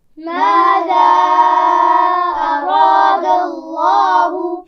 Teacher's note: اراد اللہ میں را کو موٹا پڑھنا ہے اور لام جلالہ یعنی لفظ اللہ کے لام کو بھی موٹا پڑھنا ہے